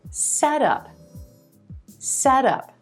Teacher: the words set and up bring them together into one word put the stress on the first word set and it becomes set up